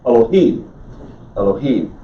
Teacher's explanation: it's got this shabbat next to it it's an unvocalized vowel the emphasis is on the third syllable · The emphasis is on the third syllable, so it's Elohim.